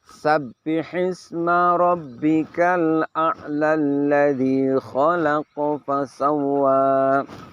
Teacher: ketika kita sambungkan sehingga akhirnya berbunyi a'la alladzi, di situ hamzah wasolnya sudah tidak berguna lagi.